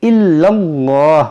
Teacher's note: یہاں پر وقف کریں گے تو اس پیش کو ساکن کریں گے, الا اللہ, اور اس لام کو موٹا بھی کریں گے کیونکہ یہاں پر زبر ہے